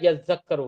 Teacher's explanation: تا کو زال سے بدل دیا، زال کا زال میں ادغام کر دیا، یذکرو ہو گیا